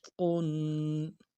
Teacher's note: ایک الف دال میں غنہ کو کھینچنا ہے۔ قا دو پیش قن، محیط قن۔